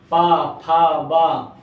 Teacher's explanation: ओठ से ओठ टकरा रहे हैं ठीक है इसलिए हम इन्ह क्या कहते हैं स्पर्श व्यंजन कहते